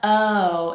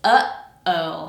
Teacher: So you stop the air with the throat, and then let it out, oh. That's a glottal stop.